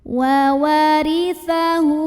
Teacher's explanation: huruf lo dibunyikan secara tarqiq karena harokatnya di bawah kasroh maka bacanya tipis pangkal lidah datar